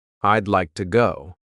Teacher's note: we're cutting off all the sounds in the word wood except for that final D